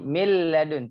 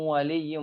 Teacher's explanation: tidak ada gunahnya, langsung ke lam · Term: kamil